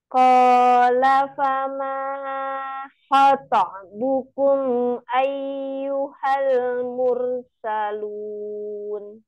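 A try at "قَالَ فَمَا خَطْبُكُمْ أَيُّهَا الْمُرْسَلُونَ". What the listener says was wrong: Diulang kembali ya, Umi. Fama, maknya agak kepanjangan tadi.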